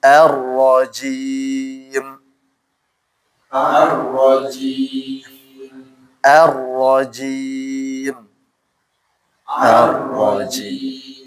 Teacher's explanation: Ini kan mad sukun dipanjang dulu teman-teman baru ke mimnya. Jangan arrajim enggak boleh tapi panjang-panjang.